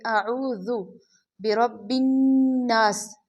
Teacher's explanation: را کو پر پڑھیں گے اس لیے کہ را پر زبر ہے، اور نون مشدد ہے اس لیے یہاں پہ غنہ کریں گے۔